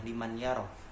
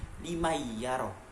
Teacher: ketika hukum nun bertemu dengan ya, maka nun tersebut harus dimasukkan ke dalam ya, seperti limayyaro, limayyaro, limayyaro, dibarengi dengan dengungan. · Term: idgham bi gunnah